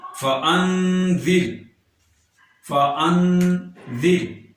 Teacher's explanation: فانذر زال کے نیچے زیر ہے اور را ساکن ہے، لہٰذا یہاں پر را کو ہم باریک پڑھیں گے